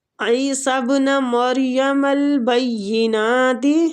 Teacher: بینات نون کھڑی زبر کے ساتھ ہے تو کھینچیں گے